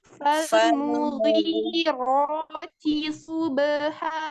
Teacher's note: Nah, lagi ro-nya berusaha untuk menebalkan lagi. T-nya ya, ro-nya tebal, T-nya tipis, sodenya tebal.